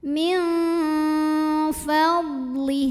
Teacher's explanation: Karena ada nun sukun yang menghadapi huruf fa, maka nun sukun ini dibunyikan samar-samar. Jadi tidak jelas N-nya, melainkan kita siap-siap menuju fa disertai bunyi dengung. Dengung dan kesamarannya sama karena huruf fa ini makhrajnya tengah-tengah, jadi tidak terlalu dekat, tidak terlalu jauh dari nun. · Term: ikhfa